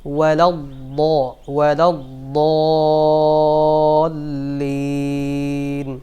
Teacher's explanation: ওয়াও উচ্চারণ হবে 2 ঠোঁট থেকে, হামজা উচ্চারণ হয় কণ্ঠনালীর শুরুর অংশ থেকে, ওয়াও উচ্চারণ হবে 2 ঠোঁট থেকে।